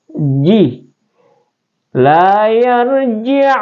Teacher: Cara penyebutan ja itu atau makharij huruf ja itu adalah di wastul lisan ya, pertengahan lidah